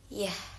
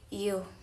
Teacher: Sound produced by raising the mid part of the tongue to the hard palate. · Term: Palatal